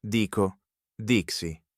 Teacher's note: To say: the consonants tighten into an x sound.